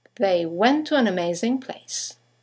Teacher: you have the semi-vowel W that connects the vowels to and an to each other